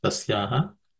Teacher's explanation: the first word is rather simple. There are no aspirated consonants.